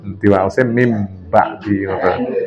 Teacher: Nun tanwin ketemu ba, niku iklab. Balik dados mim. Mim ba'di niku kan tulisannya min ba'di.